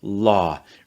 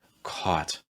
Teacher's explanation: holding your ah sound for instance a little bit longer in a word like law · holding your aw sound, for instance, a little bit longer in a word like law or in a word like caught. At the same time, especially true for diphthongs, don't drag it out too long or don't make it too tense, especially at the end of the vowel sound.